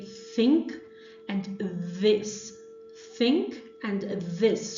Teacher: dental, which is the tongue tip plus the teeth